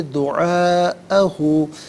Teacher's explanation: Minimum 3 سے 4 حرکات کی مقدار کھینچ کر پڑھنا لازمی ہے، اور میگزیمم اس کو 5 سے 6 حرکات کی مقدار کھینچ کر پڑھ سکتے ہیں۔ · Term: مد متصل